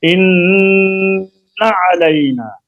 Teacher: انا کا غنہ لمبا کر لیں لیکن زبر کو نہیں کھینچے